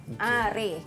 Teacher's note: imalah ni dia bunyi pertengahan antara bunyi fathah yang baris atas tadi dengan bunyi kasrah